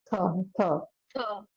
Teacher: थकार है ना महाप्राण थकार